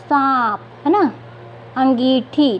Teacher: तो कैसे हो रहा उच्चारण नाक और मुंह से दोनों से हो रहा है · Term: चंद्रबिंदु